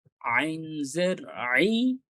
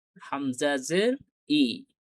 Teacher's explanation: গলার ভেতর থেকে আসতেছে, আর হামজাটা একবারে নরমালি খুব সহজে উচ্চারণ করা যাচ্ছে